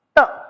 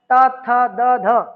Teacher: हमारी जो जीभ है दांतों के बिल्कुल बीच में आ रही है, जहां जीभ दांतों को स्पर्श करती है, दांतों के मध्य में आती है, तो क्या हो जाता है, दंत्य।